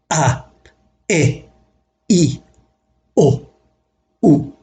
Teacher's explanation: Does the first row at upper left really stand for syllables with just a vowel? Actually, there is an understood glottal stop, pronounced with a burst from the windpipe, which counts as a consonant to precede each vowel.